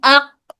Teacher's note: صفت شدہ ہے، شدہ کی وجہ سے پہلے آواز رک جا رہی ہے